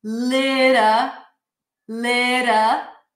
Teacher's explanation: That's a flap T, so it's like a really, really light D.